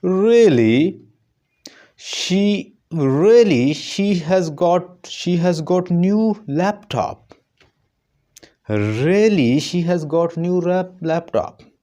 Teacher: ऊपर राइज हो रहा है और आगे जो टोन है वो नीचे जा रही है, तो इसको हम कहते हैं राइज फॉल।